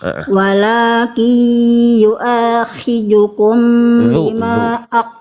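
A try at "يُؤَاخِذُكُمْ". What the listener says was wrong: Khidhu. Jangan tebal. Zu. Walakin yu'akhidhukum.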